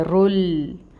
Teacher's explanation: اب را کو ہمیں لام کے ساتھ ملانا ہے، رل. اب یہاں پر ہمیں لام کو ہلانا نہیں ہے، لام میں توسط آئے گا.